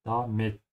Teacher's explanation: the emphasis is on the I